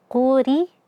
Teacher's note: rinya kasrah maka dibaca tarqiq tipis.